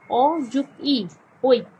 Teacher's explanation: ওইকে যদি আমরা ভাঙি তাহলে হয় অ যোগ ই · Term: যৌগিক স্বরধ্বনি